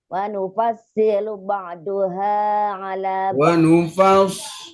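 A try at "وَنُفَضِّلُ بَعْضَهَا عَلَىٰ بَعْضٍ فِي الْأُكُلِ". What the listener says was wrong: Wa nufaddi, bukan wa nufassi, kan ada titiknya. Wa nufaddilu ba'daha ala ba'din fil ukul.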